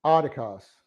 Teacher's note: And we have adikos, the accent's on the first syllable.